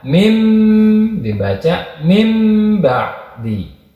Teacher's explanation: si nunnya itu diganti dengan huruf mim